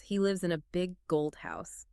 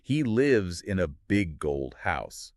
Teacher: in natural speech, we tend to emphasize the most important words in a sentence. In our example, those would be lives, gold, and house. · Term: sentence stress